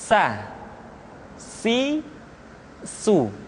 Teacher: berikutnya huruf Sa di diucapkan sebagaimana kita mengucapkan huruf sa yaitu ujung lidah di antara dua gigi seri kita